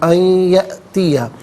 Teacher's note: اور یہ یہاں پر جو یرملون کا قاعدہ ہے وہ اپلائی کیا جائے گا. یأتیہ میں یا میں آپ دیکھیں حمزہ ساکن ہے، اسے جھٹکے کے ساتھ ادا کیا جائے گا